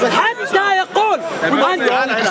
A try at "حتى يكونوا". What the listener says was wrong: حتى يكون is right. Read it again. He didn't read the last part. حتى يكونوا versus حتى يكون.